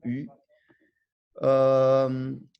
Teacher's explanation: O Y, som de um I com lábio arredondado